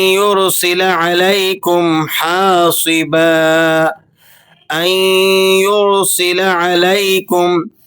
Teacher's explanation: سین باریک سیٹی والا حروف ہے۔